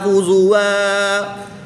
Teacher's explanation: دو زبر کی تنوین کو وقف کی حالت میں الف مدہ سے تبدیل کر کے پڑھیں گے۔